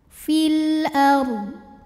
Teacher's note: Huruf ra sukun dibunyikan secara tafkhim sebab huruf sebelumnya berbaris fathah, maka dibaca ra-nya tebal. Fil ard. Dodnya harus tetap terbaca ya, tapi jangan mantul.